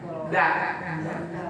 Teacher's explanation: Kalau dal itu makhrajnya ujung lidah nempel dengan pangkal gigi.